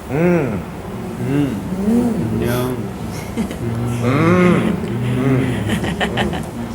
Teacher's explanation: it's a flow of sound with a nasal stop the flow of sound is out through your nose